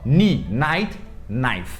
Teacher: tem um K antes, só que esse K é completamente mudo. Então a gente só fala como se começasse no N mesmo